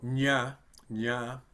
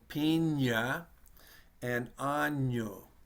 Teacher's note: Well, it's pronounced like the word in English, which would be canyon. And so in English, we kind of combine the N and the Y together, and we get canyon.